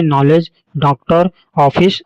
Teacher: यह बिंदु रहित चंद्र है जिसका उच्चारण औ के समान होता है। आ के समान नहीं। प्रायः अंग्रेजी के शब्दों के साथ ही इसका प्रयोग होता है।